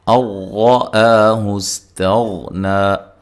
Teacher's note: یہاں نون ساکن کا ادغام ہے بلا غنہ، غننے کے بغیر